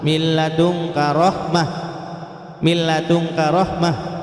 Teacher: khusus lam dan ro itu yang bila guna tanpa dengung